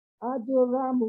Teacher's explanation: واؤ ساکن سے پہلے اگر مضموم لیٹر ہو تو جی وہ ایک مد بنتی ہے جس کو مد طبعی کہتے ہیں، تو اس کو جی 2 سیکنڈ برابر پڑھنا ہے. 2 سیکنڈ جی کا ٹائم ملتا ہے. · جیم جو ہے وہ جی پھر قلقلہ میں سے ہے، تو اس پہ پھر جنبش دے کے پڑھنا ہے. اور را ٹھیک کو ہے.